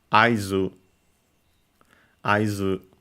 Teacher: High, low, low, so accented on the first one.